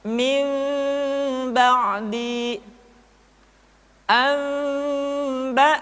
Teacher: Kemudian diucapkan mim dengan cara yang samar. Caranya, ketika mengucapkan huruf mim, kedua bibir kita agak sedikit direnggangkan, tidak sempurna rapat. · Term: iqlab